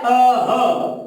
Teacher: अ का और ह का उच्चारण स्थान कंठ है।